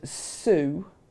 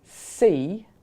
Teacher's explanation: the S in Sue is very different because I'm anticipating the U vowel than if I say see when I'm anticipating the E vowel, and that makes it sound different. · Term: co-articulate